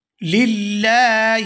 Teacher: للہ، یہاں لام کو باریک ادا کریں گے، لفظ اللہ کے لام سے پہلے اگر زیر ہو تو وہ باریک ادا ہوتا ہے